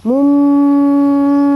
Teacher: iqlab itu adalah nun mati atau tanwin bertemu dengan huruf ba, maka dia berubah menjadi mim bunyinya. Harus didengungkan ya